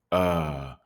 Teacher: We don't usually say rock and roll. We're going to change the and sound to un. Uh, that's the schwa sound.